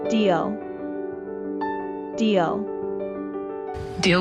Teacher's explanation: doing something to achieve a goal or to solve a problem the EA is pronounced with the long e sound by making our mouth wide like a smile while our tongue touches the sides of our teeth